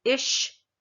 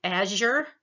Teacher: the palatal, where your tongue goes up towards the soft palate. Again, these are fricatives, so we have the voiceless sh as in ish, and j as in azure.